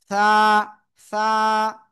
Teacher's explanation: উপরে দুই দাতের আগা লাগান লাগিয়ে হালকা বাতাস বের করতে হবে বাতাস বের করেন বের করে দেখেন হাত দেন এরকম দিয়ে দেখেন